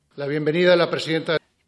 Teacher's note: el Rey está pronunciando una aproximante muy suave. La lengua solo hace un gesto de acercarse a los dientes. Es solo una ligera perturbación en la transición entre la vocal A y la vocal E.